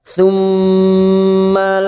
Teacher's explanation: mim yang bertasdid Gun musadadah kita dengungkan